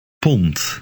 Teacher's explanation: Note that the D is pronounced like a T because it is at the end of the word.